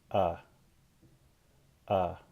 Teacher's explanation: The vowel is produced with the tongue low, open mid, or low mid. · The tongue is back, and the lips are not rounded. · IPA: /ʌ/